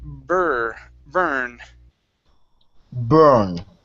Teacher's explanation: instead of born with an OR sound, this is going to be an ER sound